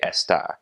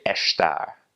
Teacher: in continental Portuguese when there is an ass before a consonant they will make that s like an SH sound